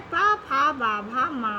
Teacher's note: फिर पा वर्ग, जिसका उच्चारण स्थान ओष्ठ्य होता है, जिसमें दोनों ओठ जुड़ जाते हैं। इसमें पा, फा, बा, भा, मा वर्ण आते हैं।